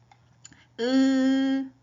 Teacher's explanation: 으 입술이 평평해요. 그리고 으 입 안 벌어져요. 그리고 으 하니까 뒤쪽에서 납니다. 자 후설 평순 고모음이 의예요.